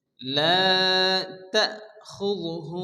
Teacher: তা ঝটকা হবে, এখানে হামজা সাকিন, এজন্য এখানে হালকা ধাক্কা দিয়ে পড়তে হবে